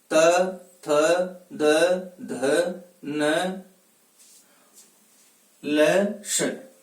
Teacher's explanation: इनका जब हम उच्चारण करेंगे तो जिह्वा ऊपर वाले दांतों को स्पर्श करेगी।